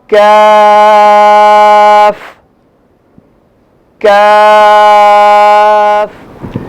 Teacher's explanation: جہاں سے قاف ادا ہو رہا ہے کاف بھی تھوڑا سا منہ کی طرف ہٹ کے آگے وہاں سے ادا ہوگا